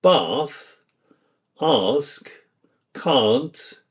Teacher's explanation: Words like bath, ask, can't use the long ah sound, not the short a of American English. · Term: Trap bath split